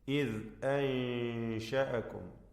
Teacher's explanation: സാക്കിന നൂനിനെ ഇഖ്ഫാ ഹഖീഖി നൽകി അവ്യക്തമാക്കി മണിക്കുക. ശേഷം പദത്തിൻ്റെ അന്ത്യത്തിലെ മീം ശേഷമുള്ള മീമിൽ പൂർണ്ണമായും ലയിപ്പിച്ച് മണിക്കുക.